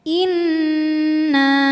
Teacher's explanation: ada hukum nun musyaddadah atau gunah musyaddadah ya atau wajibul ghunah karena nunnya bertasdid maka dibacanya dengung tahan dengungannya kurang lebih dua harakat